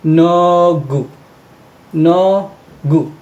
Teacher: Dahil ang mga vowels natin ay horizontal, sila ay nakapesto sa ilalim. At ito pa, dahil nasa gitna ang ating consonant na K, siya ay magiging G sound